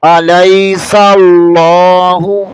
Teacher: علی، سین زبر کو لام کے ساتھ ملائیں گے، یہاں اس میں جلالت اللہ والا لام ہے، اسے پر پڑھیں گے یعنی موٹا پڑھیں گے